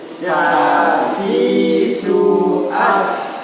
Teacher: Kalau sa itu ada desisnya ya.